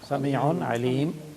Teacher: according to the rules of waqf, you will drop the final vowel